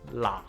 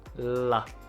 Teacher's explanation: we have an onset that is classified as a lateral approximant in Cantonese, and that is the L sound